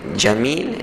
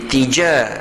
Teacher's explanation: tengah-tengah lidah kita itu kita angkat ke langit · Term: jim